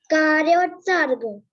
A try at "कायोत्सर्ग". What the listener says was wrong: कायोत्सर्ग, कार्योत्सर्ग नहीं बेटा, कार्यो नहीं, रानी है, कायो। हाँ देखो उसमें किताब में कायोत्सर्ग, कायोत्सर्ग, रानी रा की रेफ नहीं लगी होगी, देखो कायोत्सर्ग लिखा है, कार्योत्सर्ग नहीं, कायोत्सर्ग।